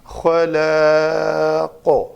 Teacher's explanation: دو زیر والی تنوین ہے، موقوف کیا، اس کو ساکن کر کے صرف قاف کو ساکن پڑھا تو اس لام زبر الف لا، الف مدہ بن گیا، الف کا ماقبل زبر ہے، الف مدہ محل مد بن گیا. آخری حرف کو ہم نے خود ساکن کر کے تو اس کے اوپر مد بن گئی تو اس لیے ہم نے اس کو لمبا پڑھا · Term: مد عارض وقفی